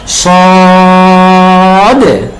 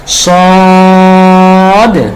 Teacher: সদতে চার আলিফ টান হবে এবং সদের শেষে একটা ডাল সাকিনের উচ্চারণ আসার কারণে একটা ধাক্কা হবে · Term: কলকলা